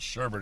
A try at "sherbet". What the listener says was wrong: It's not sherbet. It's sherbet. There's no R in there. Sherbet. Sherbet.